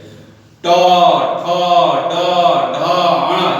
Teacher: इसके उच्चारण में जीभा मूर्धा से सटती है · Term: मूर्धन्य